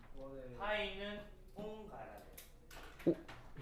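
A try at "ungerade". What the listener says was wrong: 웅이 아니고요. 운. 이게 뭐 일본 사람이야? 발음이 안 돼요. 그거. 웅이 아니고 운 해봐. 운.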